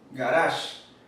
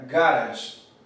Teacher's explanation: acento en el dialecto americano está en la segunda sílaba garage pero en la primera sería garage el acento solamente no